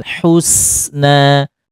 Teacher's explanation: Husna huruf Sin ditipiskan ingat huruf Sin ditipiskan